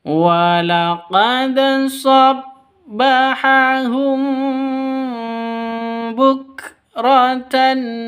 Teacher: Humnya dengung karena ada mim mati bertemu dengan ba. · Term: ikhfa syafawi